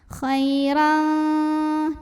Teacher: Karena ada tanwin fathah yang ketemu sama huruf kaf, maka tanwin fathahnya dibunyikan samar-samar, siap-siap ke kaf. Khairan disertai dengung, dan dengungnya lebih besar daripada samarnya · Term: ikhfa ab'ad